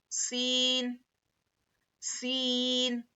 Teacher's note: सीन में एक सीटी जैसी आवाज होंगी और सीन को हम सख्ती से पढ़ेंगे।